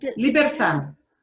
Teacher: Entonces, cuando una palabra termina en D, no hay, el énfasis está en la última sílaba